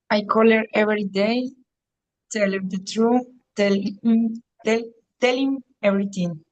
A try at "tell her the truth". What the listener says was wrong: The pronunciation of this word, truth, sacando la lengüita un poquito. Truth. No true. True no, sino truth.